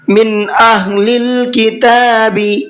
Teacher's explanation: من نون کو ظاہر کر کے پڑھنا ہے، اس میں غنہ اخفا نہیں کرنا ہے، اس لیے کہ نون ساکن کے بعد میں حمزہ ہے اور حمزہ اظہار کے حرفوں میں سے ہے۔